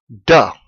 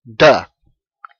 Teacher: your tongue presses about the middle of the roof of your mouth and you use your vocal chords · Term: voiced